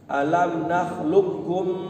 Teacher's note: Mim mati ketemu mim maka dilamakan ditahan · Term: idgham mimi